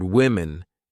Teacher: the O in the word women is pronounced more like an I